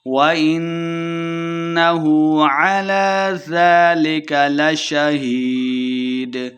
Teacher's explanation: لربه لکنود، وَإِنَّهُ عَلَى ذَلِكَ لَشَهِيدٌ، نون مشدد ہے، غنہ کرنا ہے۔ عَلَى، عین کو تلفظ سے پڑھنا ہے، لام کے اوپر کھڑی زبر ہے، 2 حرکات لمبا کریں گے۔